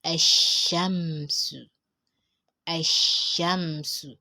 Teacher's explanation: That means you don't have to pronounce the lam. Just pronounce your alif and go straight to the letter.